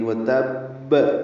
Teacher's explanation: وتب، واو کو جلدی پڑھنا ہے، تا کو با سے ملانا ہے۔ با مشدد ہے، 2 مرتبہ ادا ہوگا۔ پہلے تا کو با سے ملانا ہے، پھر با پہ قلقلہ کرنا ہے رک کر، یعنی وتب۔